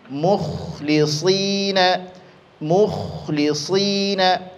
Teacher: huruf kha dia bersifat rokhawah. Ya, bersifat rokhawah, mesti dia mengalir suara.